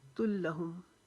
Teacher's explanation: لام کو رکاوٹ کے ساتھ پڑھیں گے تشدید کی وجہ سے